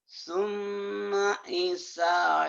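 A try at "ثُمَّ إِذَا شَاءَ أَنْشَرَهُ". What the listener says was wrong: Jangan isa, iza. Bapak ketuker. Giran sa ke za, giran da ke sa. Iza.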